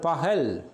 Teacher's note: 2 உயிர்களுக்கு இடையிலும் எரல வளல என்பதில் வகரமை தவிர்ந்த ஏனைய 5 இடையினமைகளை அடுத்தும் வருகின்ற போது இந்த ககரம் H-ஆக ஒலிக்கும்